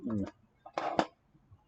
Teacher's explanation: it's a long ooh, I think. Just your basic, I think it's close to like the cardinal ooh. It's rounded lips, back vowel.